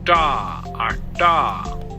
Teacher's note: This sound is called a voiceless retroflex plosive.